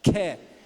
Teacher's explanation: Em primeiro lugar, o K é aspirado.